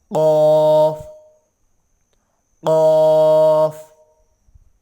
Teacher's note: کوے کے متصل زبان کی جڑ جب اوپر کے تالو سے ٹکر کھائے قاف ادا ہوگا